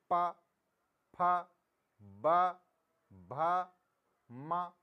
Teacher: बिना होठ को मिलाए आप इनमें से कोई शब्द बोल नहीं सकते। देखिए प, फ, ब, भ, म, इनमें आप बिना इनको ओठों को मिलाए नहीं बोल सकते। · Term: प वर्ग